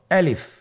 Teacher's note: আমি যখন আলিফ বলছি এর মধ্যে কোন টান হবে না · আলিফ হরফটি মাখরাজ হলো আপনার মুখের শূন্যস্থান থেকে গলা এবং মুখের শূন্যস্থান হতে আলিফ হরফটি উচ্চারিত হয়।